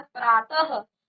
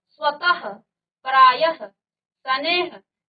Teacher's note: last में ह का उच्चारण कर रहे हैं